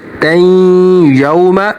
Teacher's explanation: तो इसको 1 सेकंड तक खींचेंगे, मीक़ातैं, यहाँ पर गुन्ना होगा, दो ज़बर पर गुन्ना होगा, ता तनवीन पर गुन्ना होगा, तैं यौम। और वाव से पहले ज़बर है और वाव साकन से पहले ज़बर है, तो यहाँ पर वाव हरूफ लीन है, तो वाव को थोड़ा सा खींच कर पढ़ेंगे, यौम, इस तरह से।